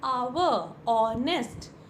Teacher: In these two words, first letter H is silent. Silent means there's no sound of H. · Although the word starts with a consonant, but the consonant in both the cases is silent, and the pronunciation starts with the vowel sound, so we use article an.